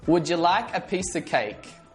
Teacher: Did you notice how of sounds like a schwa?